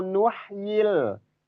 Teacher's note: Nuhyil itu H-nya sudah dapat yang H yang di tengah-tengah tenggorokan itu sudah sudah pas di makhrajnya itu